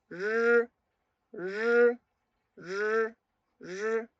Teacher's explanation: Porque la lengua, ubicando en la misma posición que la ponemos en la posición de la ZH, CH y SH, tenemos que largar el sonido de R haciéndola vibrar un poco, no muy fuerte. · No es el sonido rápido, no es ese sonido r que nosotros tenemos cuando hablamos español, sino que es más un sonido más suave.